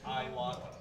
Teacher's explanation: Vietnamese doesn't pronounce the S. When they say ice water, they say I water.